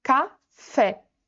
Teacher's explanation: Fé é a sílaba que a gente fala com mais força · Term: sílaba tônica